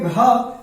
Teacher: जैसे हम बोलेंगे का के बाद खा, खा पे ज्यादा हवा बाहर निकल रहा है, फिर गा पे कम, और जब कहेंगे घा तो घा में भी क्या होगा? ज्यादा हवा बाहर निकलेगी। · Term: महाप्राण